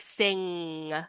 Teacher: With the /ŋ/ sound, you get the least oral resonance because the sound doesn't have as much space to come through inside your mouth · The last nasal sound is the ing, I-N-G, like sing. You can see that the point of contact is at the base of the tongue at the back of your hard palate.